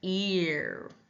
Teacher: symbol this is R controlled as well in words like ear start with a high front tongue